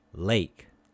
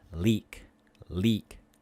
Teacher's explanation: the a a oh comparing a with e both are front tense vowels however a is a mid vowel and e is a high vowel